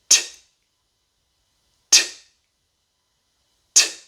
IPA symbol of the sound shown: t